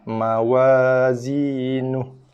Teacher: So apabila kita waqaf ataupun memberhentikan bacaan pada ha dhamir, ha kata ganti nama ni, maka ha kata ganti nama ni kita akan baca dia dengan baris sukun.